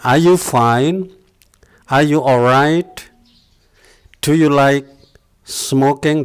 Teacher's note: Kemudian yang kedua adalah intonation atau naik turunnya suara. Khususnya untuk pertanyaan yang berupa yes no question, itu adalah intonasinya naik.